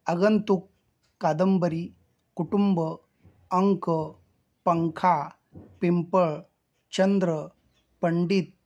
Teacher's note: तो परसवर्ण अनुनासिक आहे. म्हणजे त्याचा उच्चार नाकातून होतो आणि जेव्हा जेव्हा असा उच्चार नाकातून होतो तिथं आपल्याला अनुस्वार द्यावा लागतो.